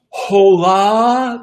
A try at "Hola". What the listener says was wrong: The H is silent.